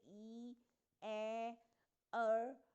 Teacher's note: अनराउंडेड vowels हैं जैसे ई, ए, अर, तो इनके लिए आपके लिप्स रिलैक्स्ड पोजीशन में होंगे। जैसे जैसे हम स्माइल कर रहे होते हैं तो थोड़े से रिलैक्स्ड होते हैं, हमारे लिप्स खुले हुए होते हैं, उस तरह से हमारे लिप्स थोड़े से रिलैक्स्ड पोजीशन में होंगे।